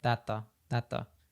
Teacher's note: also happen with a t plus th sound so we have thatth we don't say both the T and theth because again it's just really difficult thatth compared to just saying